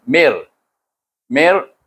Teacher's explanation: Kalau bertemu dengan lam, bertemu dengan ra, kita baca dengan idgham bila gunnah. Tak ada dengung. Terus masuk.